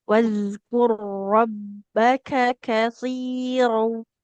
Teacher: Ro sukunnya melebur ke huruf ro yang ada di depannya